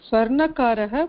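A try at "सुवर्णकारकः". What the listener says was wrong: சுவர்ணகாரக. ஸ்வர்ணா இல்ல, சுவர்ணகாரக.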